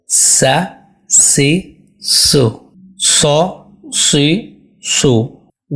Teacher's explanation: اس میں آئے گی سین میں سی ٹی کی طرح تیز آواز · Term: سی ٹی کی آواز